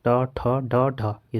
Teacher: सारी क्या है मुर्धन्य ध्वनि है